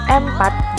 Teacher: Dan dalam proses lain disebut nasalisasi homorgen, yaitu penambahan sengau homorgen sebelum sebuah konsonan